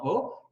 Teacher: Sehemu ya nyuma ya ulimi utapata irabu mbili ambazo moja ni o, hapa katikati nyuma o, halafu kule juu kuna irabu u.